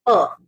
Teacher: lips touch में air inside the mouth रह गया, एंड देन सडन आपका एयर रिलीज होता है, बर्स्ट होता है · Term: plosive